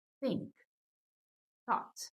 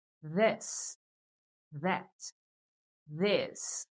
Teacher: um som aspirante, apenas o sopro. E já a palavra this, that é um som que vibra.